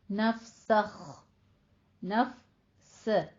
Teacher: نفسخ، نفس، سین باریک رہے گا، یہ نہیں کہ آپ نے اس کو پور پڑھنا ہے خو کو اور ادنا حلق سے نکالتے نکالتے آپ سین کو صاد بنا دیں. سوخ نہیں کہنا، سین باریک ہی رہے گا